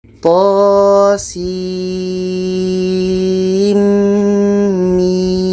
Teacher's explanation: Nun mati bertemu mim itu idgham bi ghunnah. Jadi setelah sa ini kita panjangkan enam harakat, di tengah-tengah ini kita dengungkan dua harakat, setelah itu baru kita panjangkan enam harakat.